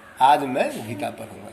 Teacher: यहाँ गीता पर बल पड़ रहा है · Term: बलाघात